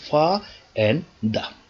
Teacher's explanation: Okay, this word has two syllables. One is stressed syllable, that is fa, is a bit louder. The pitch is high. The degree of prominence is high here, and it is produced a bit, let's say more loudly.